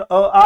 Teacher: स्थान के आधार पे कंठ स्वर अ आ होता है